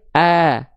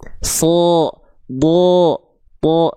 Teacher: Huruf tebal, kenapa vokal A-nya berubah seolah menjadi vokal O? Karena vokal A-nya terhalangi jalurnya oleh pangkal lidah. Ketika dia mau keluar, kehalangin sama pangkal lidah.